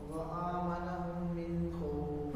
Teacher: غنہ اس لیے نہیں کیا کہ آگے حروف خلقی خا آ رہا ہے